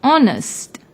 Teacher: although it starts with H it is silent when we pronounce the word honest